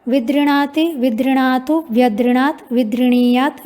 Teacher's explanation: धातु में तो दीर्घ रिकार सुनाई पड़ रहा है, पर रूप चलाते समय ह्रस्व रिकार हो जाता है